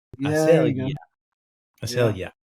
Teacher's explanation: You put the stress on that next to last syllable.